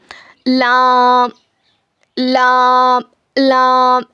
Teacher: जबान के किनारे को सामने के 4 दांतों के मसूड़ों में लगाने से लाम अदा होता है। It is pronounced when the एज of your tongue touch the gums of your fourth of front teeth.